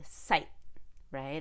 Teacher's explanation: we stop the t sight right and i don't let any air come out